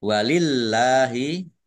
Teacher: Allahnya dibaca tipis karena harakat di depannya kasrah